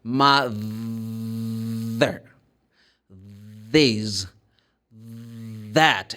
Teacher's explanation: You're going to place the tongue between the teeth. But now I'm going to vibrate the vocal cords. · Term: voiced